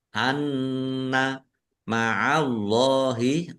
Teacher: Allahnya dibaca tebal karena harokat di depannya fathah. Lam fathah berdiri mat tobi'i panjang 2 harokat.